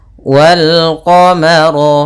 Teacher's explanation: rnya tebal karena ro berharakat fathah · dan dibaca bertemu dengan huruf qamariah salah satunya ad huruf q maka lamnya dibaca dengan jelas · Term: alif lam Qariah, ro-nya tebal